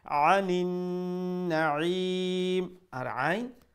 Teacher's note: middle throat letter গলার মধ্য অংশ থেকে উচ্চারণ হবে যাতে হামজার লাখান সাউন্ড না হয়